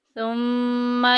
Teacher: पूरे कुरान पाक में जिधर जिधर भी मीम के ऊपर शद्द आई या नून के ऊपर शद्द आई गुन्ना करेंगे, नाक में आवाज़ लेके जाएंगे।